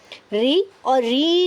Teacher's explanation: फिर हमारा तीसरा सूत्र है ऋतु रसाणाम मूर्धा, मतलब ऋतु रसाणाम को मूर्धा से बोलते हैं। री और री का दीर्घ रूप हम उसको मूर्धा से बोलते हैं